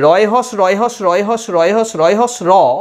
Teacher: কম্পিত ব্যঞ্জন কেন না, র উচ্চারণের সময় আমাদের জিভের সামনের দিকটা কাঁপে, কিন্তু একটা রতে আমরা বুঝতে পারি না।